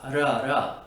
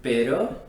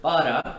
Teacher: the ere, is actually made by flapping your tongue against the roof of your mouth once